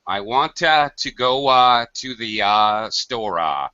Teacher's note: you add this extra vowel sound at the ends of words well to be perfectly honest sometimes you're actually creating a vowel